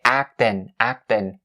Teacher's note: With the word acting, you can drop the G at the end and you say actin